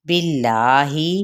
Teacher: یہاں پہ اس میں جلالہ کا لام باریک پڑھا جائے گا